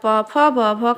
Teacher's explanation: प फ ब भ का उच्चारण स्थान ओष्ठ है